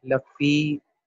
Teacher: پھر یا فا کے بعد یا مد ہے، اسے 2 حرکت تک پڑھیں گے.